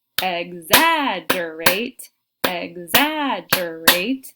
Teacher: They should be able to hear in that second syllable we have the stress.